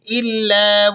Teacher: لام مشدد ہے تو آپ ذرا سختی اور جماؤ کے ساتھ اسے ادا کریں گے